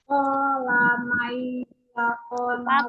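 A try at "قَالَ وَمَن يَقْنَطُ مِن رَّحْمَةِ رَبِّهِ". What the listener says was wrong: Wamai, kola wamai, ada wanya. Wamai, apanya ketinggalan terus Umi. Wanya jangan ketinggalan Wanya.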